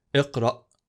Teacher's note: If we use the glottal stop sound of the Alif, the exit point will come from the deepest part of the throat, squeezing the vocal cords.